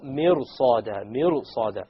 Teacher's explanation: after the ra is a sad, and sad is of the letters of isti'la, the heavy letters. Therefore, this ra will become heavy.